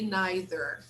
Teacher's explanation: in america they pronounce the final r